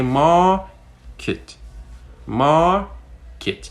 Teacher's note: You can obviously notice that the kit is said a little bit lower.